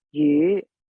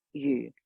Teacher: that U is the fourth low falling tone